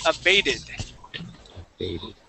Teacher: that T we can switch to a D sound, and that E would then sound like a short I. So we would say abated.